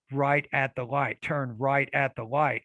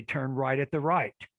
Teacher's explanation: you'll notice they confuse the r and the l consonant sounds in english